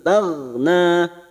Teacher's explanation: huruf Gin bukan qolqala kita tahan jangan sampai memantul